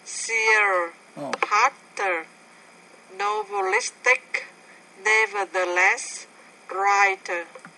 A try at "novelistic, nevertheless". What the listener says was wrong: Okay, so novelistic, nevertheless. So the flap sound you don't like. If you pronounce it as a T, that's fine. That's not American English, but it doesn't matter.